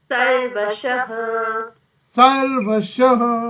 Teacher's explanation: हाँ, विसर्ग है तो उसको कहीं पर भी चोट आनी है। सर्वशः के बाद में ह विसर्ग का उच्चारण